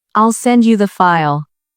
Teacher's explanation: in the phrase I'll send you the file, the stress is on send and file